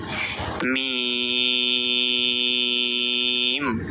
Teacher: ঠোঁটের ভেজা অংশ থেকে মিম উচ্চারিত হয়